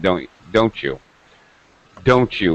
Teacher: falling intonation that means I'm making it a rhetorical question